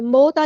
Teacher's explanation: واو ساکن سے پہلے زبر ہے، واو یہاں پر واولین آ گئی ہے، یعنی مدلین ہوگی، نرمی سے موڑیں گے ، موتا نہیں مو، موتا ان کنتم صادقین، نون ساکن کی